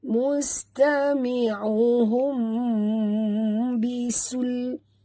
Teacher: Mim mati bertemu ba, tutup mulut, dengung, ikhfa syafawi